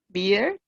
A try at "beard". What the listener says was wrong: Sí, la única diferencia entre ambas es que esta te la corta una D. Entonces, este es beer y este es beard.